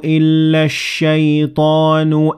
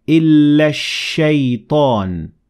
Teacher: I completely ignored Hamzat Wasl and the lam, and I connected the alif in illa directly to the sheen